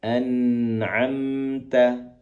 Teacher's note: gunah ataupun mendengungnya lebih panjang